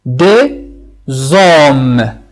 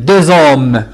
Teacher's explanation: Si le H est muet, on aura le son Z.